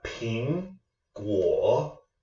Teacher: third tone here we have ping guo a second tone peeing our voice rises and then our third tone drops and then comes back up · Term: second tone in third tone